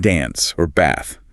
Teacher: The A in dance or bath is a broader ah sound, like the A in father.